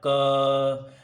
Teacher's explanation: जैसे हम क को बोले तो अपने आप क अंदर से अ निकल रहा है